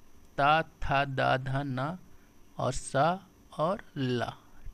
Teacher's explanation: यानी आपकी जीवा जो होती है वो आपके दंत से टच हो के देखिए